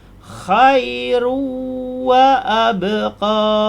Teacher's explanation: Dari run kita masuk kepada ru. Khairu, kemudian dengung menjadi ruwa. Ru kita tahan. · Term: idgham ma'al ghunnah